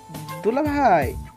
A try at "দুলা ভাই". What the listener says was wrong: ধুলা না, দুলা। আবার বলো তো।